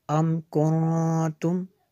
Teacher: یہاں پہ یہ جو غنہ ہوا نون ساکن کے بعد تعارف اخفا میں سے ہے، اس لیے یہاں پہ اخفا ہوا، ہمیں نے غنہ کیا ہے۔